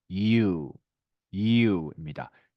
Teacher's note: 사실은 이 발음은 우리가 알고 있는 you보다는요, 네, 이, 우로 발음하시는 것이 맞습니다. 이 발음은 좀 짧게 하셔서요.